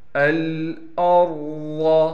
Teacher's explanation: الْأَرْضَ، حمزہ کو را سے ملائیں گے، را کو موٹا کر کے پڑھیں گے، ضاد بھی موٹی پڑھی جائے گی